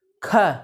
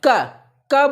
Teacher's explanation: ऐसे क बोलेंगे तो यहाँ श्वास नहीं लड़ेगी, और जैसे बोलेंगे भैया ख श्वास लड़ जाएगी। तो जिसमें श्वास लड़ेगी वो आपका महाप्राण, और जिसमें श्वास नहीं लड़ेगी अल्प प्राण